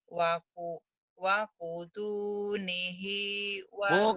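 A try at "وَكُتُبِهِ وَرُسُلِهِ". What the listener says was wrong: bukan wakutuni. Titiknya di bawah. Iya emang wakutuni kalau nun mah ya. ba.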